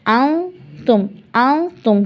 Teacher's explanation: اب میں اس کو ان تم نہیں پڑھوں گی، ان تم نہیں، میں نون ساکن کو چھپاؤں گی، پورا نہیں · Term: اخفا